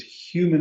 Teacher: A human because human aspirates the H.